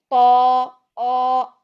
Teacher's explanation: तो को मोटा करने के लिए हम पीछे से जुबान का मोटा वाला हिस्सा ऊपर को उठाएंगे